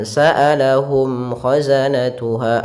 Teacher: Kemudian pada lafal mim mati, di sini ada bacaan izhar syafawi, yaitu suara mimnya harus dibaca dengan jelas, tidak boleh ditahan